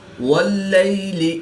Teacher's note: یا ساکن سے پہلے لام پر زبر ہے تو یا لین اس کو لمبا نہیں کریں گے